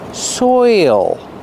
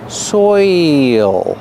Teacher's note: you have the oi sound followed by the dark l